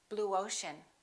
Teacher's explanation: we don't put a little y in there, we put a little W sound, w.